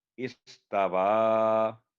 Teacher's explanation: واہ ہمیشہ اسٹریٹ پڑھا جاتا ہے، اس کو گول نہیں کیا جاتا